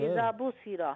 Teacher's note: زال کو لمبا کرنا ہے الف مدہ کی وجہ سے